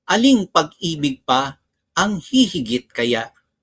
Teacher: The hati is the first 6 syllable is pronounced and then pause for a while and then the remaining 6 syllables.